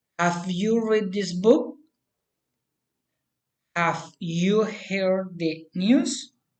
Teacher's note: General, general question, rising intonation.